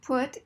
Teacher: it's a little more lax and not as tense as O